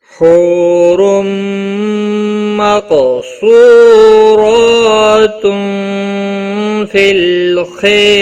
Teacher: تنوین کے بعد حروف یرملون کا میم آیا ہے، ادغام با گنہ ہوگا، گنہ کے ساتھ پڑھیں گے. را دو پیش کی وجہ سے پر پڑا جائے گا.